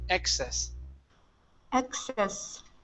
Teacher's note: So stress at the very beginning.